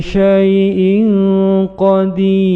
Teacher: bacaan Ikhfa n nun sukun atau tanwin bertemu dengan qof maka menjadi bacaannya mendengung samar menuju pada huruf di depannya panjang dua ketukan